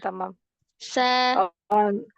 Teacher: Sa, Nah, sa, kalau malah dia lebih harus mendekati ujung lidahnya ujung gigi serinya bagian bawah, jangan ke atas, jangan bagian atas gitu kan. Ujung lidahnya lebih mendekati ke bagian bawah. Nah, kalau itu lebih mendekati ke bagian atas, maka dia kayak mau ke sa mau gitu. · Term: sin